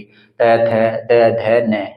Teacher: हमारी जो जीवा का अगला हिस्सा है ना वो हमारे दांतों को टच करेगा, और जब दांतों को टच कर कर किसी वर्ण का उच्चारण किया जाता है तो वहां पर उनको दंत्य व्यंजन कहा जाता है।